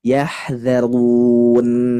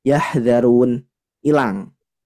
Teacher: huruf nun ketika diwakafkan maka punya sifat tawassut sifat tawassut ini harus ditekan